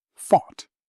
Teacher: Rhymes with caught, bought. Tip, the OUGH here sounds like aw. Just one syllable.